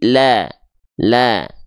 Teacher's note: dari tepi lidah bagian depan yang kiri menyusur sampai ke ujung lidah dan tepi lidah bagian depan yang kanan menyusur sampai ke ujung lidah